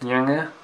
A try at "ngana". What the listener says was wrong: Kita ketemukan ini ID yang kata N dan G, N dan Y. Dia nggak bisa bilang, dia pelidah tergulung-gulung.